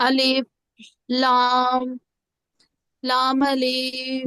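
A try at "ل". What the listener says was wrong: गलत, अलिफ को नहीं खींचना है, अलिफ को नहीं खींचना है, लाम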